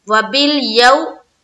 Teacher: वावलीन का कायदा है, वाव साकिन और उससे पहले क्या है जबर